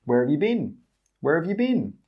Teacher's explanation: We don't say 'you'. We say 'yuh'. And we don't say 'been'. We say 'bin'.